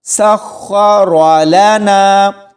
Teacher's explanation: سخ، آگے را ہے، را کو موٹا پڑھیں گے، را کے اوپر زبر ہے تو یہ پر یعنی موٹا پڑھا جائے گا، سخر لنا۔ اس کو باریک رالانا ایسے نہیں پڑھنا، موٹا پڑھا جائے گا۔